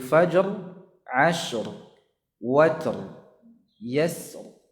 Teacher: Jadi dibaca sebagaimana huruf isti'la, ya, ra-nya dibaca dengan tebal karena sebelum ra ini sukun, sebelumnya lagi fathah. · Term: tafkhim